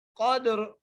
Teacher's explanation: را کو موٹا کر کے پڑھیں گے، ما لیلۃ القدر، قدر، دال پہ قلقلہ بھی ہو اور را موٹی بھی ہو · کو لام سے ملائیں گے، ما لیلۃ ما لیلۃ القدر، قدر، قاف کو دال سے ملا کر پڑھیں گے، کیونکہ دال پر قلقلہ ہو رہا ہے ، اور را جو ہے را کے نیچے زیر ہے، لیکن